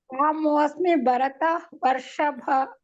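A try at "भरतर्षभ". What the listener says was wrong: ಭರತ ವರ್ಷಭ ಅಂತ ನೀವು ಹೇಳಬೇಡಿ ಭರತರ್ಷಭ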